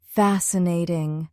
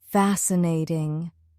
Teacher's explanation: It has three syllables. Fast cnatting. The stress is on the first syllable.